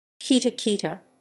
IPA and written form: ˈkita (Kita)